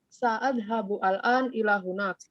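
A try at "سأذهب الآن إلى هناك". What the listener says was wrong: Disambung aja. Sa'adhabul an gitu.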